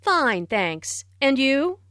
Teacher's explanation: notice the rising intonation on and you